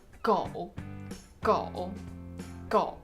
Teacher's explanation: For example, when you want to say dog in Chinese, 狗 狗 狗 You see, when you're pronouncing it, you're actually just pronouncing the falling part and the bouncing part is really small and follows it. That's because when you lower your voice to the point it cannot go any lower, the bounce happens just automatically because your voice has to go back to the normal range at some point. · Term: third tone